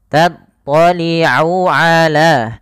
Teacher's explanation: Ain itu makhrajnya, tempat keluarnya adalah tenggorokan tengah